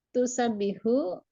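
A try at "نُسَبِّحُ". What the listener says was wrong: ini nun, Bu, nusabbihu bukan tusabbihu.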